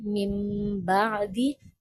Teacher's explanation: اگر تنوین یا نون ساکن کے بعد با آ جائے تو نون کی آواز کو میم میں بدل دیتے ہیں اور ناک کی آواز کے ساتھ پڑھا جاتا ہے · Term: اقلاب